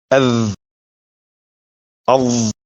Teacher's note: أذ أظ The two letters in this group are both voiced letters. When producing these sounds, the tongue tip is placed between the upper teeth and protrudes out. The primary difference between them is again the shape of the tongue.